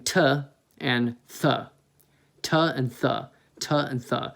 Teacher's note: it's basically like you're doing a straight T sound and a TH sound at the same time. So you're doing t and th, t and th, t and th. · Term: closed hi-hat